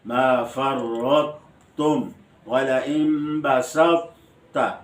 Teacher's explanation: طوا کو بغیر قلقلہ کے پر